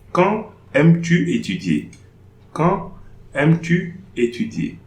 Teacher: no liaison between the D and AI.